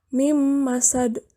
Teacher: Cara membacanya didengungkan. Suara nun mati dilebur masukkan ke dalam huruf sesudahnya, yaitu mim, sehingga dibacanya mim masad, bukan min masad. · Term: nun mati bertemu mim